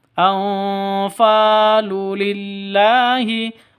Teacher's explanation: Fa panjang 2 ketukan karena ada alif diawali dengan fathah mad asli. · Anfalu nun mati bertemu dengan fa samar didengungkan, siap-siap huruf fa-nya atau ke huruf ikhfa hakikinya, karena ini disebut dengan ikhfa hakiki.